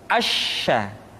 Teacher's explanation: Berikutnya huruf sya. Sya dikeluarkan dengan cara mengangkat tengah lidah kita ke langit-langit